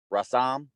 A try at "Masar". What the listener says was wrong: You did it backwards, up. Masar. So remember the first glyph to help you out, it's like a wave. And that's the ma.